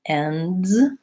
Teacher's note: I have three consonants there in a row, the N, the D, and the Z sound, ends, or words. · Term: consonant clusters